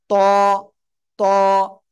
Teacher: মোটা আওয়াজে পড়তে হয়। জিহ্বার আগা উপরে দুই দাঁতের গলায় লাগাতে হবে, লাগিয়ে মোটা আওয়াজে পড়তে হবে।